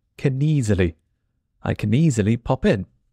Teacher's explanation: word can and easily blend and it sounds like kily kily the last letter N joins the next word